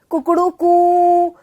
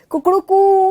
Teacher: ये देखिए, ये जो तीन का जो निशान है ना, कई बार ऐसे भी आ जाता है ये, इसका मतलब देखिए, आपने मुर्गे की वो सुनी होगी, कुकड़ू कू, अरे तो जो वो लास्ट वाला जो एक खिंचता चला जाता है, समझ रहे हैं आप, कुकड़ू कू, तो ये ऊ जो खिंचता चला जा रहा है, ठीक है, यह प्लुत कहलाता है।